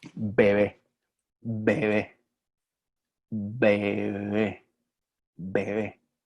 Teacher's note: cuando se realiza en la mitad entre 2 vocales, normalmente se realiza así, sin tocar los labios